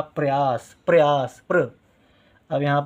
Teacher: प का उच्चारण हो रहा है साथ में र का भी उच्चारण हो रहा है लेकिन प के बाद में हो रहा है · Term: आधा र